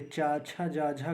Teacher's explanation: इन्हें स्पर्श संघर्षी बोलते हैं, क्योंकि इनको बोलने के साथ साथ स्पर्श के साथ संघर्ष के साथ निकलती है, क्योंकि वायु रगड़ खाकर निकलती है। बाकी को स्पर्श व्यंजन बोलते हैं।